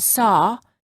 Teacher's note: for the aw, the lips are a little bit more oval in shape and the tongue is slightly tense. However, in many parts of the United States, the and aw are pronounced the same. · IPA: /ɔ/